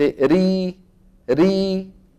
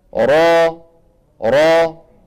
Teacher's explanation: فيها هذا التقعر شايفينه بخلاف المرققه ما فيها تقعر ثم ايضا لسان المزمار يرجع في الراء المفخمه فيحدث تضيق في الحلق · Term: الراء المفخمة